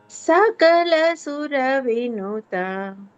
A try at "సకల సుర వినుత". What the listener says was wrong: Yeah, కొంచెం సా పెంచండి, అప్పుడు అన్ని కరెక్ట్ గా వచ్చేస్తాయి. సా సకల. యా, సా కొంచెం పెంచండి. సా.